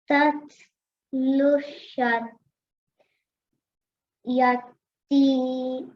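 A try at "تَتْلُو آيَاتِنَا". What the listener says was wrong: You forgot to elongate the ya. Ya has a vertical fatha, so we have to stretch it. Ta is a thick, heavy sound, so that's why we're rounding our mouth, okay?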